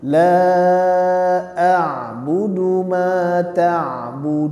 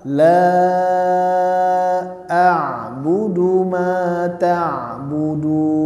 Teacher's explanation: Terakhir nunnya disenyumkan sehingga dia tidak jadi tebal. Dan jangan dihilangkan.